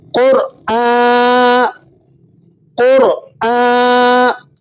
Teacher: قاف اور را دونوں کو آپ نے یہاں پر پر کر کے یعنی موٹا کر کے ادا کرنا ہے۔ قاف حروف مستعلیہ میں سے ہے یعنی ہر حال میں موٹے پڑھے جانے والے حروف میں سے، اور رائے ساکنہ سے پہلے حرف پر اگر پیش ہو تو رائے ساکنہ کو بھی آپ نے پر کر کے یعنی مفخم موٹا کر کے ادا کرنا ہوتا ہے۔